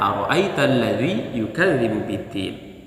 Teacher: untuk ayat pertama, maka kita gunakan nada naik.